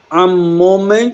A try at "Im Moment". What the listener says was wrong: इम आम कहाँ है?